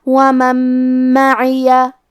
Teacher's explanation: کلمت معیہ میم حروف الادغام بغنہ میں سے ہے اور ادغام کا معنی ہے حرف کو حرف میں داخل کرنا. تو ہم یہ نون کو میم میں ملا کے غنہ اور تشدید کے ساتھ یہ حکم کو ادا کریں گے